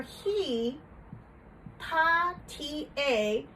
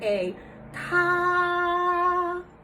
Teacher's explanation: then for he ha T a and that's first tone so our sound doesn't go up it doesn't go down it doesn't rollercoaster down and then up it's just an even tone